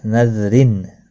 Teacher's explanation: تنوین کے بعد حروف اکفا کا فا آیا ہے، اخفا حقیقی ہوگا